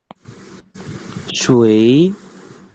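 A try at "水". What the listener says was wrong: Shui. Gitu, shui. Tapi nada naik.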